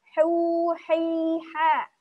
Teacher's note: Kalau ha dia makhrajnya sama kayak ain di tengah tenggorokan.